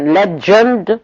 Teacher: The word legend is pronounced with the affricate j, not the fricative j.